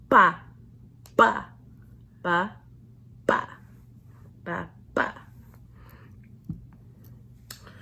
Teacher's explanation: it's aspirated it's tense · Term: double consonants